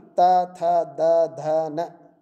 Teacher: त, थ, द, ध, न ध्वनियाँ दंत्य हैं